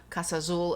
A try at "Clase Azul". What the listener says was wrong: It's not Casa. Clase. C-L-A-S-E.